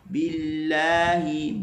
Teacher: Bil, ba bagi bawah, masuk kalimah Allah, maka dibaca dengan nipis